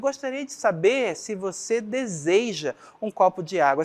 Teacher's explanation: Percebam que aqui, nesta segunda oração, ou seja, nesta segunda frase aqui, eu tenho uma interrogativa indireta. Eu faço uma afirmação, uma certa afirmação aí, com um tom de questionamento.